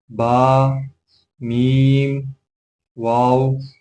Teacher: دونوں ہونٹوں سے 3 حروف ادا ہوتے ہیں